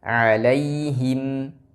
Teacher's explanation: ha ketika dia berharakat kasrah seringkiali tidak jelas karena pada dasarnya huruf ha itu memiliki satu sifat yang tidak boleh diterapkan tapi memang bawaan daripada huruf ha yaitu sifat khifa atau khafa yaitu samar maka harus dijelaskan Khususnya ketika berharakat kasrah dan damah alaihim kemudian